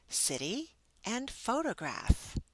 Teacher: the American English tap t, a short, voiced sound in words such as city and photograph.